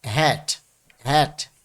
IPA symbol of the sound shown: æ